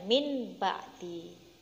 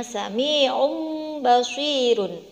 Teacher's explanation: Silahkan dilihat, ada nun sukun, selanjutnya ada huruf ba. Maka bunyi suara nun sukun dimasukkan ke dalam huruf ba diganti dengan seperti suara mim sukun, yaitu mim ba'di, bukan min ba'di. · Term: iklab